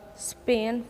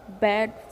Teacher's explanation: Bilabial means only two lips involved. When we produce these sounds, we only use both of our lips.